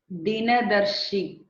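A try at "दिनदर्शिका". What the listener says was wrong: You're making it short. Dinadarshika. You're saying it is a long, but you're reading it short. The last vowel of the word.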